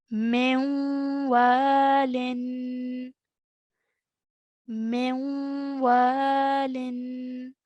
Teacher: half nasal sound as i join the meme to the wall i'm making a nasal sound in between and carrying it for about two counts